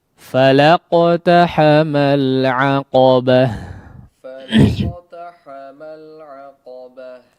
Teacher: maka ta marbutah ketika kondisinya diwaqafkan ya, menjadi huruf terakhir pada kondisi waqaf, maka dia berubah menjadi ha ya. Seperti ya, atau pengucapannya menjadi ha ya, ha yang besar.